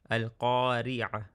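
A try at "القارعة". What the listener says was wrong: Okay, again with the qaf, same thing. Let out a teeny bit more air. Qai. When you don't let out enough air, it sounds closer to the jim sound, or well, the Egyptian jim. Ge. I want you to go qai.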